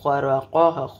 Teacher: را کو موٹا کریں گے, خوا بھی موٹا ہے, یہ تینوں موٹے حروف ہے. خرقہ یہاں پہ تو کی وجہ سے ہم اس کو وقف کریں گے.